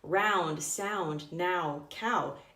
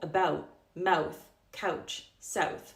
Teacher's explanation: For example, in the words round, sound, now, cow, it sounds the exact same. However, if this ow sound comes before a voiceless consonant, then that's where you get this reduced o